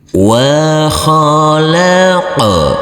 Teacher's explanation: Huruf qaf harus kita pantulkan karena ini adalah bacaan qalqalah, huruf qaf yang bersukun